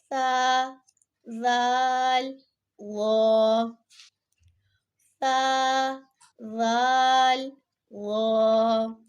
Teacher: جب زبان کی نوک سامنے والے اوپر کے 2 دانتوں کے اندرونی کناروں سے لگے گی تو اس سے یہ 3 حرف ادا ہوں گے۔ واو میں زبان کا پچھلا حصہ اوپر کی طرف اٹھتا ہے جس کی وجہ سے یہ موٹی آواز میں ادا ہوتا ہے۔ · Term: حروف لثویہ